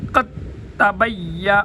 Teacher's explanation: قد دال کو بالکل نہیں پڑھا جائے گا، اسکپ کر دیں گے کیونکہ تا ماقبل حرکت چاہتی ہے، قاف کی حرکت کے ساتھ تا کو پڑھیں گے اور تا کی اپنی تبین، تبین میں تبین بعض حضرات یا کو سختی کے ساتھ پڑھتے ہیں، وہ بھی غلط ہے، یا حروف لین میں سے ہیں، نرمی کے ساتھ پڑھیں گے۔